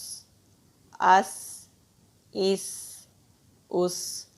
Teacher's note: سین بھی حروف ہمس میں سے ہے، اس میں بھی سانس جاری رہتی ہے